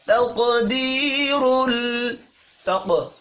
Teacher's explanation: قاف حروف مستعلیہ ہے پر پڑھیں گے، قاف ساکن پر قلقلہ بھی کرنا ہے